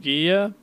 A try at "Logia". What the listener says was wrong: You literally just gotta change one letter in that, and you are correct. Nope, you gotta change the second letter.